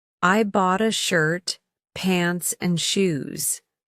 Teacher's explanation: The pitch rises on shirt and pants and falls on shoes. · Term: Rise-fall intonation